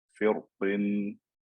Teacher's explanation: Firqin, so the cause of the fatness of the qaf is gone, so it's best to read with tarqiq. Whereas if I stopped on the word, because the kasra is gone and the qaf is like a full qaf, then I'm going to make it fat when I stop on it.